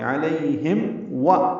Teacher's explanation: علیہم میم پہ ہونٹ بند ہوں گے، اظہار شفوی ہوگا، پھر واو ادا ہوگی. علیہم و ایسے پڑھنا ہے، واو ہونٹوں کو نہ تمام گلائی سے ادا کریں گے، ہونٹ آگے لیں گے.